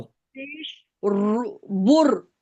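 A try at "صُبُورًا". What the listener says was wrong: बुर नहीं, बाल जबर बा। बाल जबर बा, बा वाव पेश। वक्फ करें।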